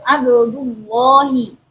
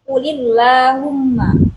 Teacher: Sal abdullahi, lafaz Allahnya ditebalkan. Sedangkan ketika dalam keadaan huruf sebelum lafaz Allah itu berharokat kasroh, maka huruf lam dibaca tipis